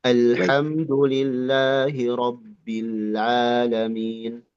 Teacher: Huruf ain diringankan saja seperti H. Jangan jangan berat.